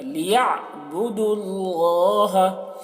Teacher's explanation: اب یہاں پر دیکھیے واو اور الف، یہ دونوں الف کو نہیں پڑھا جا رہا کیونکہ اس پہ کوئی حرکت نہیں، تو دال کو لام سے ملا کر پڑھ رہے ہیں